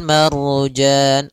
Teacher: ada Ro sebelumnya fathah maka dia ro tebal